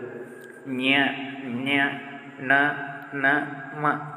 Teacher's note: ಅನುನಾಸಿಕಾಕ್ಷರಗಳು ಅಂದರೆ ಮೂಗಿನ ಸಹಾಯದಿಂದ ಉಚ್ಚರಿಸಲಾಗುವ ವ್ಯಂಜನಗಳು.